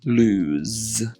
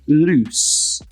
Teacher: when it's with one O, it's a Z sound. So lose. Whereas when it's with two O's, it's an S sound.